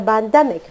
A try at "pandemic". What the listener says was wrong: You say during the pandemic. So the P, that initial P, you need to pronounce that a little bit more clearly.